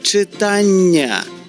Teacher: Чуєте подовжений приголосний Нь? Ось дві літери н відображають його.